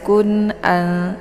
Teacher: Jadi cara bacanya nunnya dibaca jelas, kun'al ya, tidak boleh ditahan, cukup ditekan saja. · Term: idhar hakiki